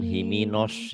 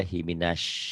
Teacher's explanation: ya himinas karena Sinin itu unsur unsur a bukan unsur o himinas bukan himinos mulutnya jangan dimonyongin